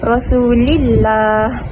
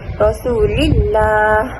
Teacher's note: lam pada perkataan Allah dibaca dengan tipis.